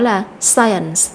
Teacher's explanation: Trong đó thì chúng ta nhấn mạnh vào âm tiết thứ nhất đối với danh từ này